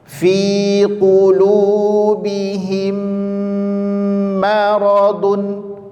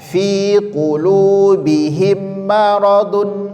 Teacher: Maka hukumnya sekali lagi didengungkan sepanjang 2 harokat.